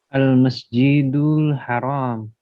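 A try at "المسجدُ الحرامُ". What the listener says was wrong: Dibaca huruf terakhirnya juga. Al-Masjidul Haramu.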